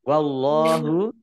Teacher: Of lam tanda wakof boleh terus tetapi berhenti lebih baik. Wallahu, Allahnya dibaca tebal karena harokat di depannya fathah.